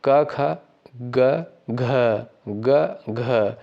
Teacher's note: घ ग घ तो घ क्या है आपका महाप्राण हो जाएगा लेकिन ग जो है अल्प प्राण हो जाएगा क्योंकि वायु जो है कम निकल रही है